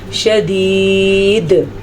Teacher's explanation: دال ساکن ہونے کی وجہ سے یہاں پہ قلقلے کی کنڈیشن ہو جائے گی